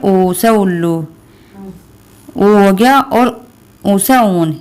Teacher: ऊ से उल्लू और ऊ से ऊन भी ओष्ठ्य में ही आता है